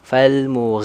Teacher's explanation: makhraj aljauf itu artinya dia keluarnya dari rongga tenggorokan dan rongga mulut terbuka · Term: Mad thii